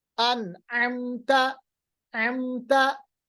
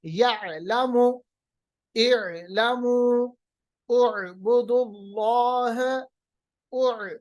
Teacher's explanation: आइन को मखरज वस्त हलक से अदा करना है